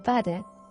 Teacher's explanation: A low back vowel in American English is a, as in father.